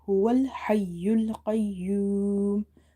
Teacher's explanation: Now in the word huwa al-hayyul qayyum, the word ha, the letter ha is from the middle of the throat